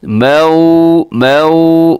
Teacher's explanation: واو لین ہے، نرمی سے پڑھنا ہے، مجہول بھی نہیں پڑھنا